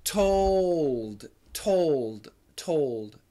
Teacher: you should keep the L for American pronunciation